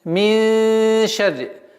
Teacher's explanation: То есть ихфа мягкая у нас, так как шин мягкий звук, ра с кясрой, с удвоением, мин шарри. Назализация в размере двух огласовок.